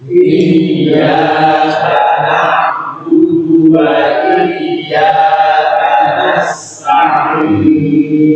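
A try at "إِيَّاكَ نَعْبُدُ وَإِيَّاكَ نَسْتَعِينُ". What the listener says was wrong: Hamznya, sinnya lebih terasa. Nasta'in.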